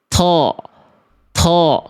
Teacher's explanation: Th th harusnya enggak boleh keluar nafas.